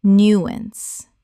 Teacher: Two syllables with the stress on the first.